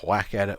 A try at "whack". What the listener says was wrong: You pronounce the H. Whack it.